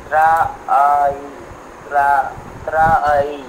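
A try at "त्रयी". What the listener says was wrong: না ত্রয়ী না, ওইভাবে না, ওটা এটা দীর্ঘ করা যাবে না, তো দীর্ঘ বর্ণ নয় তো, ত্রয়ী একবারে বলতে হবে, ত্রয়ী, ত্রয়ী, হ্যাঁ ত্রয়ী, হ্যাঁ ত্রয়ী, রেক সাং বেদাস ত্রয়স্ত্রয়ী, হয়ে গেল।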